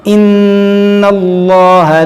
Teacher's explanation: یہاں پر دیکھیں لام کو موٹا کریں گے، اس میں جلالت اللہ عز و جل کے لام سے پہلے زبر ہے.